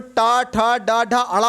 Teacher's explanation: उसके बाद दोस्तों आपका टा वर्ग आता है, इसमें टा, ठा, डा, ढा, अड़ा होता है, जो आपके मूर्धन्य को स्पर्श किया करता है।